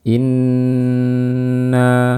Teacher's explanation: nun bertasydid dibaca dengan gunnah yang panjang